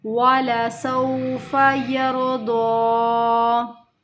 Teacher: را موٹا ہو رہا ہے، را ساکن سے پہلے زبر کی حرکت ہے